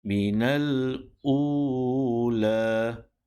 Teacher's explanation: Lepasnya ada huruf Waw yang kosong daripada sebarang simbol ataupun sebarang tanda. Maka bunyi ataupun sebutan huruf Hamzah di sini yang berbaris hadapan perlu dipanjangkan dengan kadar 2 harakat